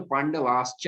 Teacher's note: अब स्तोह चुनास चुह, इसको आदेश कहेंगे, वो आदेश करेगा कि तुम सकार जो हो, तुम तालव्य शकार बन जाओ। तो सकार जो है वो तालव्य शकार बन जाएगा, तो पांडवाश्च हो जाएगा। क्योंकि चा जो है वो तालव्य वर्ण है, हमने सिखाया था ना।